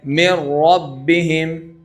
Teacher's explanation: पहले को दूसरे की तरह पढ़कर मुशद्द पढ़ने को इदगाम कहते हैं। अब नून को रा की तरह पढ़ना है।